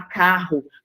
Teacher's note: Quando você fala carro, você não consegue ouvir o R e o R. É como se você estivesse ouvindo somente um R. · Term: dígrafo